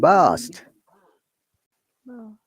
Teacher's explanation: In British English, in 45% British English words has, I think more than that, letter R is there and we don't pronounce it at all